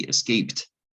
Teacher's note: it's not even a D, is it? It's a T, escaped.